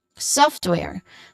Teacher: So you start with a hissing sound and then followed by a long o sound. O not o but uh uh so software and then you just follow how it looks like.